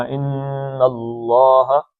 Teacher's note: یہ لین ہے، ان اللہ، اللہ کا لام موٹا پڑھنا ہے، پیچھے زبر آگے، ان اللہ، ان نون کو دو حرکتیں کھینچنا